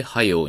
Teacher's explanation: う形が出るはずなんですよね。でもこのおめでとうではくではなくてうっていう音が出てるんですね。これはどちらかというと関西方言の特徴ですね。西日本的と言ってもいいかもしれません。早くしろというところを早しと言ったり、暑くなったというところを暑なったと言ったりするんですね。これは早くとか暑くっていうくのついた形が元になって、関西方言の方では音変化が、まあ、進んだというか起こったというふうに説明できるんですね。つまり連用形のこのくという形の形、子音の形が落ちて、はやうとかあつうとなって、で特にこのはやうの方は このあうっていう母音の連続が、あうがおうっていう音に変わったんですね 。で、はようになってると。まあ、日本語ってね、母音の連続を結構嫌うんですよね。だから、あうっていうような母音の連続があると、